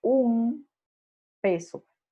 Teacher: Por ejemplo, en un peso, lo que deberíamos decir es un peso, pero como la P está cercana, pegada de la N, Entonces la N asimila los rasgos propios del sonido P, que es bilabial.